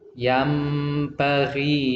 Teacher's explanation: nun sukunnya tidak dibaca yan tapi dibaca yam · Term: iqlab